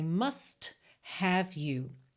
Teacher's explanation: must que já é uma palavra forte né ainda por cima com esse T marcadinho ganha toda uma ênfase especial